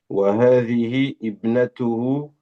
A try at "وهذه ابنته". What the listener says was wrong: on fait la liaison. Tu dis pas wahadi ibnatuhu. Wahadi ibnatuhu. Tu vois le ha que vous voyez ici, tu le ramènes jusqu'au bas. Hadi ibnatuhu.